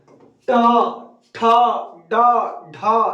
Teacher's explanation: देखिए आपका जीभ ऐसे है और ये जाके आगे से मुड़ के इसको छू रहा है ना, तो इसी को क्या कहते हैं, मूर्धा कहते हैं। ट ठ ड ढ सब में जीभ आपकी आगे से मुड़ रही है, मूर्धा मुड़ रही है, मूर्धा।